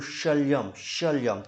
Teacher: तालु से इसका उच्चारण हो रहा है मेरे भाई। जीभ के ऊपर वाले जबड़े पे इसका प्रभाव पड़ रहा है।